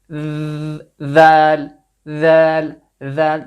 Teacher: you brought your tongue and let it touch the tip of your front upper teeth